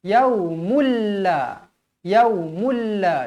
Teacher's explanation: masuk yaumulla yaumulla jangan baca Ya salah sebab dekat sini 9 dibaca samar-samar dan dimasukkan ke dalam tanda sabdu ingat ada sabdu masuk ada sabdu masuk jadi yaumulla macam tu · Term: memasukkan tanpa dengung